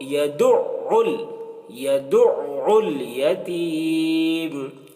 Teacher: فذلك الذي، الذي یہاں پر بھی ذال ہے۔ الذي يدع، عین ہے تو عین کو حلق سے ادا کرتے ہیں